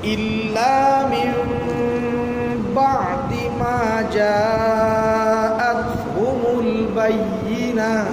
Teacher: ইল্লা মিন বাদ এর মিমটা স্পষ্ট পড়া যাবে না মিমটা কি করা যাবে না মাখরাজে হালকা উচ্চারণ হবে ইল্লা মিন